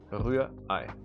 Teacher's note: the second R in this word, the R, is almost not pronounced.